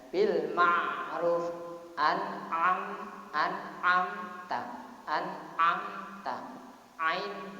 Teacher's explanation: Jadi idhar halqi karena alasannya ain termasuk huruf halqi, huruf yang keluar dari tenggorokan